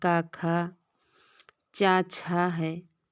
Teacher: जो खर प्रत्याहार के वर्ण हैं वो विबार हैं, श्वास हैं और अघोष हैं